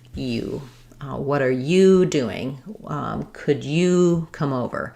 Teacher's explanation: with the word you, when I say it by itself or it's stressed, it's going to have a clear oo vowel. It'll sound like you.